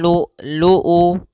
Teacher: Jahar itu tertahannya nafas, kalau syiddah adalah tertahannya suara, maka lu'u harus tertahan. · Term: hamzah yang disukunkan